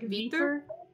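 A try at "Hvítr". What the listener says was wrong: Viter, I think we're just cutting out the H. But as far as I know, the original pronunciation, like, from Icelandic is, like, Kvitr. So you add a K sound just before you say it.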